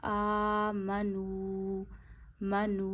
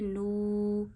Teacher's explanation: वाऊ साकिन हो और वाऊ साकिन से पीछे पेश हो तो वाऊ को भी एक उंगली जितना खींचते हैं। तो यहां पे नू एक उंगली जितना खींचिए। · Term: वाऊ मद्दा